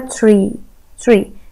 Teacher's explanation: هناخد بالنا ان التي معاها ار في صوت زي حرف الشين في النص، ترا ترا مش ترا ترا ترا، تبقى تري تري شجرة تري.